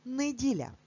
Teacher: інколи говорячи цей день тижня, ми кажемо неділя і чуємо и, але на письмі ми завжди пишемо букву е.